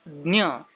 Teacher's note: In Marathi, this symbol is pronounced as Jna, something like saying the, na, and ya together.